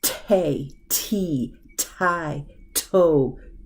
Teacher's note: you can feel the t air hit your hand